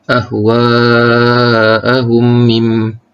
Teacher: Idgham mislain terjadi apabila mim mati bertemu dengan huruf mim yang berbaris. Cara bacaannya dibaca panjang dengung 2 harakat.